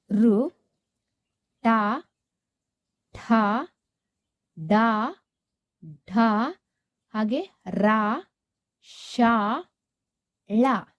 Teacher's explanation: ನಮ್ಮ ನಾಲಿಗೆಯನ್ನ ನಾವು ಅಂಗಳಿನ ಮೇಲ್ಭಾಗಕ್ಕೆ ಟಚ್ ಮಾಡ್ತೇವೆ. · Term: ಮೂರ್ಧಾನ್ಯಾಕ್ಷರಗಳು